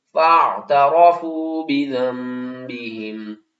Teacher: اگر نون ساکن اور تنوین کے بعد اگلا حرف جو ہے وہ با ہوگا تو ہم نون ساکن اور تنوین کی آواز کو میم کی آواز میں بدل کر پڑھیں گے